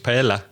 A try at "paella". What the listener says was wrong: Not quite, but nearly getting that way. They say paella. Can you hear the double L is ever so slightly different? Paella. They almost make it a bit more like a single L, but not quite. It's somewhere. It's not single. It's somewhere in the middle.